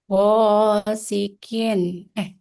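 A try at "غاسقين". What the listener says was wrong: Iya, qafnya masih kaf. Qin, qin.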